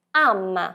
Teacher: Já em italiano tem um som mais aberto, ama. Lei ama suo marito, ela ama seu marido.